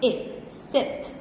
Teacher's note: your tongue is lower than high position, so it's lower. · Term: mid-high